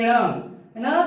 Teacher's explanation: और उसी प्रकार ये न का उच्चारण स्थान मूर्धा से किया जाता है और मूर्धा के साथ साथ नासिका से भी किया जाता है।